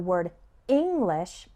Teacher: the word english has the stress on the first syllable